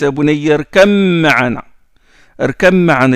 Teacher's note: Il a fait l'élision entre le bas et le mime.